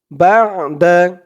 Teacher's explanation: আইনের উচ্চারণটা গলার ভিতর থেকে শক্ত হয়ে আসবে